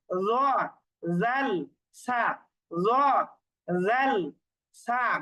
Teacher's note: উপরের দাঁতের আগার সঙ্গে জিহ্বার আগা লাগিয়ে হচ্ছে জোয়া জাল সা, নরম করে উচ্চারণ করতে হবে। জিহ্বার আগা আর উপরের দাঁতের আগা, জিহ্বার আগা আর উপরের দাঁতের আগা একসাথে লাগিয়ে জোয়া জাল সা, জোয়া জাল সা, নরম করে উচ্চারণ করতে হবে।